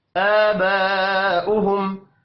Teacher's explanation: حمزہ کے اوپر کھڑی زبر ہے، 1 الف کے برابر کھینچ کر پڑھنا ہے